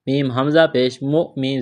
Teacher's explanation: حمزہ جب ساکن ہو تو حمزہ سے پہلے والے حرف کو حمزہ کے ساتھ ملائیں گے، جھٹکا دیں گے۔